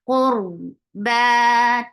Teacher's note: Dil, qaf is heavy for dhamma, circular lips attached with ra will get sifa of tawassut. And ra will be heavy because there is dhamma before it.